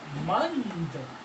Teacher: क्योंकि द जो है वो दंत्य वर्ग का है, ये रहता। तो दंत्य वर्ग का होने के कारण ये जो अनुस्वार होगा वो दंत्य का ही नासिक्य व्यंजन हो जाता है।